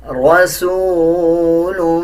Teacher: را کے اوپر زبر ہے، را کو پر یعنی موٹا پڑھا جائے گا